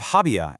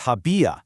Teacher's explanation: instead of habia as two syllables, the tilde on the I forces it open, giving us habia, stretched out into three syllables